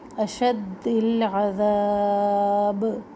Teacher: اشد العذاب کھڑا الف جو ہے یہ الف مدہ اس کو عذاب کر کے پڑھیں، اور با کے اوپر ہم رک رہے ہیں تو قلقلہ ہوگا